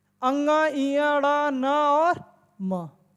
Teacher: पंचमाक्षर का कोई पूछे उच्चारण स्थान क्या है तो उससे बता देना नासिका